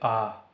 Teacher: मुख सबसे अधिक खुला होता है विवृत में।